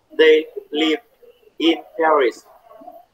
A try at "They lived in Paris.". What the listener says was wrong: Thì đọc thêm D đúng không? Đọc là the lived. Thì nó phải nói âm với từ in chứ. Lived in Paris. They lived in Paris.